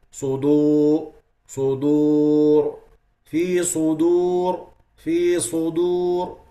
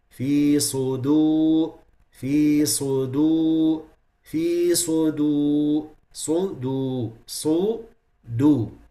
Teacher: they kept the lips closed between the sad and the dal, sudu, like this. · the dal will come from its natural articulation point, which is lowered. So the sad will not interfere with the dal.